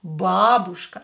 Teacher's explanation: Do not stress U, stress A, please. A is stressed.